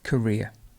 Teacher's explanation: The stress is actually over the ear.